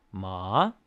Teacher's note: Then the second tone is the one that's rising. It sounds like a question.